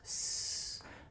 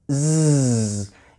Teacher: Z is made by my vocal chords it's actually a voiced consonant sound